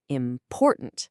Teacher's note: The main stress slams down on that middle syllable.